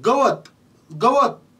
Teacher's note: त्यानंतर ग मधला थोडा लांबट होतोय, पण त मधला अ चा उच्चारच होत नाही. गवत गवत त च्या उच्चारापाशी आपण थांबतोय, तिचा उच्चार त्याचा लांबट होतच नाही, अजिबात सुद्धा लांबट होत नाही.